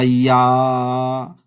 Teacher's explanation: last में जो 2 से अधिक मात्रा लग रहा है उसे हम प्लुत स्वर कहेंगे